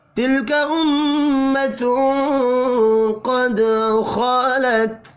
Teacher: تلک امۃ قد خلت، میم مشدد پر غنہ کریں گے۔ تنوین کے بعد قاف اخفاء حقیقی ہوگا · دال ساکن پر قلقلہ کرنا ہے